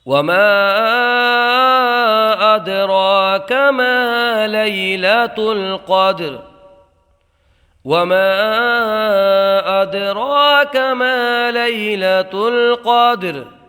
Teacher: یا میں یا لین ہوگا، بغیر کھینچے بغیر جھٹکا دیے نرمی سے معروف پڑھیں گے۔ · قاف کو موٹا پڑھیں گے، دال میں قلقلہ ہوگا، را کو حالت وقت میں ساکن کر دیں گے۔